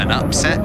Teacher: the noun, the stress is on the first syllable